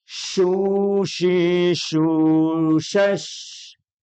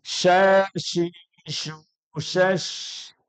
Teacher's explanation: Kita masuk kepada shin besar dengan desisan yang lebih besar.